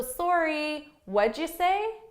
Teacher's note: rising intonation sorry what'd you say what'd you say and notice because this is a question what did you say that's a question right because of that i need my rising intonation at the end as well so sorry what'd you say so i have two rising intonations